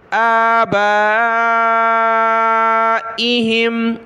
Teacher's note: من آبائہم، حمزہ کھڑا زبر آ اور با پر مد ہے، اس کو ہم نے زیادہ کھینچنا ہے، حمزہ کو ایک الف کی مقدار میں کھینچنا ہے۔ آبائہم، حمزہ زیر ای، ہا میم زیر ہیم، ایہم۔